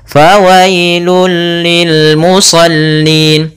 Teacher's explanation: Maaf, idgham kamil. Idgham secara keseluruhan, masuk secara keseluruhan dan hilang suara hurufnya. Langsung ke lam saja.